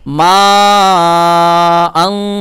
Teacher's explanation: এখানেও 4 আলিফ টান হবে, মাদ্দে মুত্তাসিল